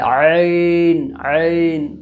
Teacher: عین یہ مڈل حصہ سے نکلتا ہے، یعنی حلق کا درمیانی حصہ سے نکلتا ہے، عین عین۔ تو یہاں پر یہ فرق کرنا ہے، اعو بولیں گے تو غلط ہو جائے گا۔